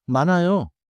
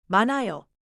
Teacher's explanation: 만의 받침은 니은, 히읗, 즉 니은, 히읗 겹받침이에요. 여기서는 히읗 소리를 따로 강하게 내지 않아요.